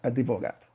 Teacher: Você pode ver que a gente coloca um i advogado. Ou às vezes tem gente que coloca até o e, né, advogado, mas não tem.